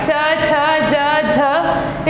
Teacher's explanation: चवर के सभी वर्णों का च, छ, ज, झ, इस तरह सभी का उच्चारण हम कहाँ से करेंगे? तालु से।